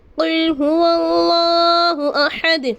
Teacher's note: اللہ کے نام سے پہلے واو پر زبر ہے۔ اللہ کے نام سے پہلے زبر ہو تو اللہ کے نام کو پر یعنی موٹا پڑھیں گے۔